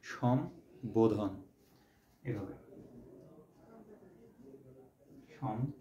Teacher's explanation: তোমরা এখন লক্ষ্য করে দেখো যে ম এবং ব যখন একসাথে আছে তখন ময়ের উচ্চারণ হইতেছে, আবার কিন্তু বয়ের উচ্চারণ যে হয়নি এমনটা না, বয়ের উচ্চারণ হইতেছে। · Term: ব ফলার উচ্চারণ